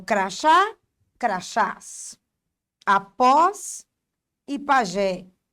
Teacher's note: A sílaba mais forte é a última. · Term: oxítona